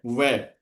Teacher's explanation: वह दंत ओष्ठ दोनों से बोला जाता है